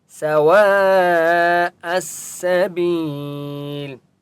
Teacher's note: حمزہ کو سین کے ساتھ ملائیں گے، الف اور لام کو نہیں پڑھیں گے، ٹھیک ہے، سین کے اوپر تشدید ہے.